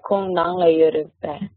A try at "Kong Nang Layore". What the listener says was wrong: Yes, that's good.